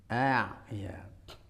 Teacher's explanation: memiliki sifat tawassut, yaitu suaranya mengalir sedikit ya, kalau disukun jadi ya.